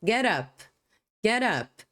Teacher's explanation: Final de consoante, início de som de vogal, você pode ligar uma palavra na outra como get up. Get up. Você não vai pronunciar essas palavras individualmente. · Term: connected speech